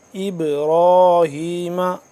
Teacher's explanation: ابراہیم قلقلہ ہو رہا ہے اب، کیونکہ با ساکن ہے